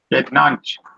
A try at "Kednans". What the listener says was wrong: This pronunciation is not correct of yours. This last CH, not correct. Kednans. Kednans. Kednans.